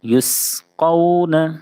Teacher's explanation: جب بھی سین آپ پڑھیں چھوٹی سین تو اس میں پتلی سیٹی جیسی آواز ضرور نکلے، اس لیے کہ یہ سیٹی جیسی آواز جو ہے اگر نہیں نکالے تو ثا سے بدل جائے گی. · قاف کو پر پڑھیں گے کیونکہ قاف حروف مستعلیہ کے ساتھ حرفوں میں سے ہے